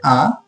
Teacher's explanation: এবং নিচের দিকে মাঝামাঝি যে অবস্থানে আছে এটা হচ্ছে আ, আ হচ্ছে মধ্য স্বরধ্বনি